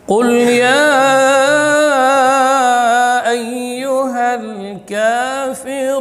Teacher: Di sini qul ya dengan huruf qaf yang keluar di pangkal lidah menempel pada langit-langit yang lunak.